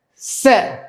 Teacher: Pra shkurt, nuk e zgjasim en dhe është me fetha, me zanoren E.